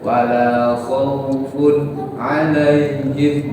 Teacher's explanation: Kalau wasol dibaca terus tidak waqaf, tidak boleh dibaca panjang seperti mad. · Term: lin